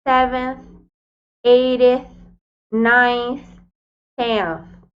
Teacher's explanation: nós vamos colocar a ponta da língua no dente para fazer aquela pronúncia soprada que nós já conhecemos, das palavrinhas thank you, they e várias outras.